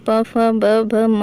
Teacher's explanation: बिना आप दोनों होठों की सहायता के बिना इन इन व्यंजनों का उच्चारण नहीं कर सकते